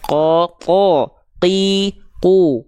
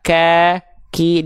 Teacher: Kalau huruf kaf, ya, dia dilafalkan sama dari pangkal lidah. Cuman dia disentuhkan ke langit-langit yang agak ke tengah nih. · Kalau huruf qaf, dia pangkal lidahnya disentuhkan ke langit-langit yang paling dalam, langit-langit yang ini.